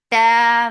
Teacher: Ta, very sharp sound. There is no flow of sound and make it 2 counts long.